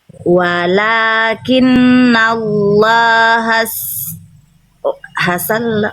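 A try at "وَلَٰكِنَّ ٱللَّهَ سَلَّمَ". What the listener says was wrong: Nah, jadi jangan ditasdidkan, jangan ditekan sinnya. Hasa langsung. Hasalam yang ditekan el. Yang ditekan yang tasdidkan lamnya berarti yang ditekan el-nya. S-nya jangan ditekan, jangan ditahan. Jangan hasa, tapi hasa.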